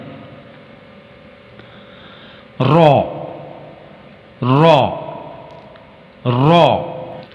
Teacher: حرف را کی آواز ادا کرنے کے لیے زبان کی نوک کو تالو کی طرف موڑنا پڑتا ہے، مگر تالو سے لگایا نہیں جاتا